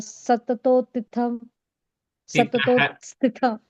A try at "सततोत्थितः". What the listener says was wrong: I think everywhere there's a visarga, you're saying an im there instead of that something else. So satatottitah.